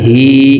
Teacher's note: হার নিচে খারাজের, তো এই হাকে এক আলিফ টেনে পড়ব, হা খারাজের হি।